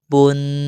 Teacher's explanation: دو پیش کو ہم ایک الف کے مقدار غنہ کے ساتھ پڑھتے ہیں